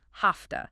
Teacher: Because the V in have is voiced, but the T in to is voiceless. The V often becomes voiceless too, sounding like an F. So have to becomes hafta. And if the next word starts with a consonant, sometimes the T drops too, like hafta.